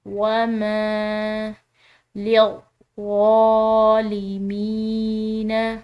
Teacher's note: یہ یا مدہ ہے، اس کو ہم کھنچاؤ دیں گے ایک الف کے برابر